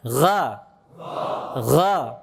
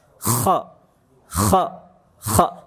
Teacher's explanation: Tapi kalau ghain ada gesekan juga, tapi lebih halus dibandingkan kha ya. Tapi tetap ada gesekan dia. · Kalau ghain tidak mengeluarkan udara, jahar sifatnya. Kalau kha mengeluarkan udara, hamas. Dua-duanya isti'la, sifatnya tebal.